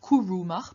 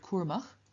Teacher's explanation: This kuru changes into kurb before vowels, so the u changes into its semi-vowel equivalent w in front of another vowel, and the u actually drops out entirely before w and m